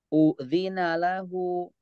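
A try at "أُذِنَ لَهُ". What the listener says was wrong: Jangan berhenti dulu di u-nya. Udzina lahu, jangan. Udzina lahu. Udzina lahu. Baik, meskipun hu-nya ini harusnya panjang, cuma ini buat latihan saja ya.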